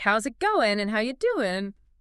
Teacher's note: You hear the missing G's, it sounds like, how's it going and how you doing?